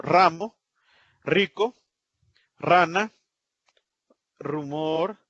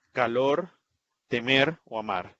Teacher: se escribe una r al principio y al final de palabra al principio es una fuerte y al final suave